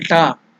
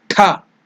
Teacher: So if you tell ta, it is less force. Tha, Mahaprana, more energy, more breath is used. So it is Mahaprana.